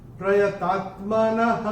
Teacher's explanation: चरण की समाप्ति पे जो विसर्ग आ रहा है उसका उच्चारण केवल और केवल ह ही होगा